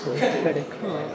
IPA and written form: ˈkredɪt kɑːd (credit card)